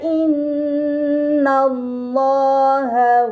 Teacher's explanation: huruf lam pada lafaz Allah yang sebelumnya terdapat harokat fathah, maka lam yang berada di lafaz Allah dibaca secara tebal